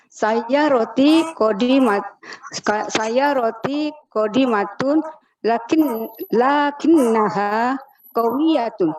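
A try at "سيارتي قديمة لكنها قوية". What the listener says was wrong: Ahsan, bagus sekali.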